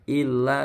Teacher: Illa cukup 2 ketukan, la-nya panjang itu.